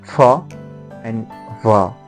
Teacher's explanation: The places listed above include bilabial using both lips, as for example pa, ba, ma, wa, using lower lip and upper teeth